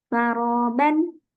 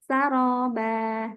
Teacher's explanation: dia terbaca waqaf jadi cuman dibaca fathah saja tapi panjangnya dua harakat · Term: Mad iwad